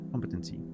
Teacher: Stress on the first syllable.